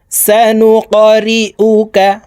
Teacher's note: এই কফ কলকলার হরফ উপরের দিকে ধাবিত করে ধাক্কা দিয়ে উচ্চারণ করব।